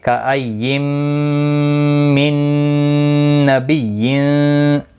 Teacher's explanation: میم مشدد پر غنہ ہوگا اور میم پھر نون کے ساتھ ملے گا، نون مشدد پر بھی غنہ ہوگا. یہاں پر بھی ادغام مع الغنہ ہوگا.